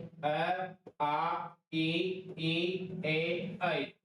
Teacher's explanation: इनके उच्चारण में होठों की स्थिति वृत्ताकार या गोलाकार नहीं होती है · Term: अवृत्तमुखी स्वर